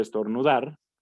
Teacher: En el caso de estornudar, pues igual la que pronunciamos con una mayor intensidad es la última. Por lo tanto, la última sílaba, por lo tanto, esa es la sílaba tónica de esta palabra.